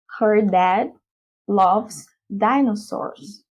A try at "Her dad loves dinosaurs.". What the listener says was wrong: Almost perfect. But you can improve one sound here. Her dad, okay. But instead of law, it's going to be l. Love is in the air. L. So it's this symbol, like the letter A, but without the middle dash.